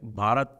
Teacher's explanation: in Hindi, they have this problem of pronunciation, the schwa deletion that happens in Hindi